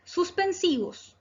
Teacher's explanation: Es una palabra grave. porque se acentúa en la penúltima sílaba